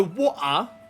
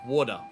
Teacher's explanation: we turn the T sound into a D sounds. It's it's distinctly different from the from the British version. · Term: Australian accent